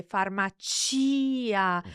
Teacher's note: if we slow down and say farmacia, so the chi syllable is emphasized in that case.